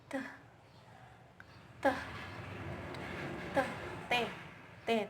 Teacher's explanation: lidah itu ujung lidah ujung lidah menyentuh bagian belakang gigi atas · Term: voiceless